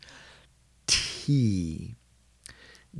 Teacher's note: So to make, like for a T, we have to actually put the tongue up on the near the front teeth, behind the teeth, lift it. I guess the tongue really goes to the top, the roof of the mouth.